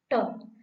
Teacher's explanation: आप ध्यान से ट का उच्चारण करें और देखें जिह्वा कहाँ पर जाकर के छूती है। आप देखेंगे तालु से थोड़ा ऊपर जाकर के जिह्वा छुएगी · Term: मूर्धा